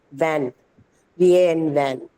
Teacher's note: So the first one there is a use of both your lips and your teeth. The upper lip and your lower teeth. That's labio dental.